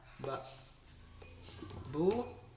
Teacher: Apabila ada baris depan sesudahnya ada waw mati, nah dibaca ba, bu, panjang. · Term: mad asli